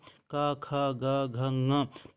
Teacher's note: कंठ से किया जाता है क ख ग घ ंग तो ंग का उच्चारण स्थान कंठ से भी होता है और यहां पर नासिका से भी · जैसे प्रथम सूत्र था अकुह विसर्जनीयानाम कंठः। यहाँ पर क वर्ग का उच्चारण स्थान कंठ से किया जाता है।